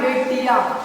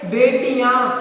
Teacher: Last में हमारे अनुनासिक स्वर है तो हमारे नासिक से, हमारी नाक से ऐसी साउंड निकलती है कुछ भारी सी। ठीक है, जो ध्वनि होती है, जो अधिकांश ध्वनि होती है, हम वो मुंह से ना छोड़ के वो अपनी नाक से छोड़ते हैं।